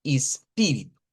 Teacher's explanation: teniendo en cuenta que la vocal tónica es la pi